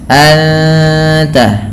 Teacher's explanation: Kemudian anta ada ikhfa hakiki, suara nunnya disamarkan kepada huruf ta dan ditahan bunyi dengungannya